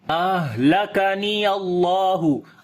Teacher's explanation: We make izhar halaki here, the clear sound of noon as well. In ha, we make hams quality, we continue our breath.